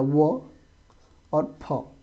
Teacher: दंतोष मतलब जिसका उच्चारण दांत और होठ की सहायता से होगा